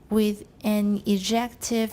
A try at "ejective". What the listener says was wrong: Why are you saying je? Are you taking French? Do you have French? Yeah, that explains it.